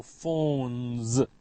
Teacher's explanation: It ends with the sound n, n. All nasals, n, m, n, are voiced, so phones.